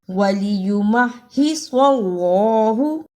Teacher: کی جگہ پہ سین کی آواز نہیں آنی چاہیے وَلِيُمَحِّصَ اللَّهُ صاد کو موٹا پڑھنا ہے